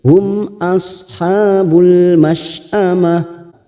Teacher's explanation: Nah fathah diikuti alif 2 harakat hum. Mim sukun bertemu hamzah idhar safawi dibaca jelas tanpa mendengung.